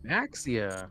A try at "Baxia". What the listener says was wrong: That's not how you pronounce it. Bashia. No, it's supposed to be Chinese, so... Basha. XIA is Sha. Basha.